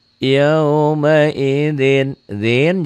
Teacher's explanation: jadi ding Kenapa jadi ding karena tanwin ini ketemu ta ini ikhfa